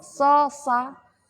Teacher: Karena huruf hames, jadi pita suaranya enggak rapat, enggak bergetar. Jadi ada rongga yang keluar, rongganya lobang, jadi enggak bergetar sininya.